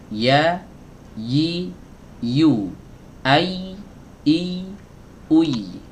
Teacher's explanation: Adapun yang ya ghairu maddiyah ini keluar dari wasatul lisan, dari tengah lidah.